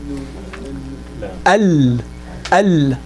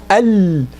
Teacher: the tongue was actually deviated and the sound kind of comes from the sides of the tongue. So when we say al, I feel the pressure, that sound coming from the side of the tongue. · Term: lam